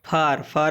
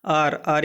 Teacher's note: फिर है ए का एक और उच्चारण बड़ा आ के अर्थ में